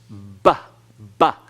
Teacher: You have to pronounce the bath using your lips. That's a labial letter.